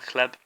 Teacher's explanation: So the b becomes p, because it becomes hard at the end of the word.